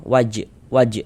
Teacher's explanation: Huruf jim dia sukun mantul · Huruf jim itu termasuk salah satu huruf qalqalah. Kalau hurufnya sukun, pantulkan. Dan ini huruf jim dalam keadaan sukun, pantulkan. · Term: qalqalah sugra, qalqalah sughra